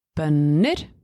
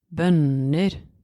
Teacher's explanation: So, essentially, tonem 1 goes a little bit down before it goes up, quite high. Whereas tonem 2 goes deeper down, and then it doesn't go that high up in the end.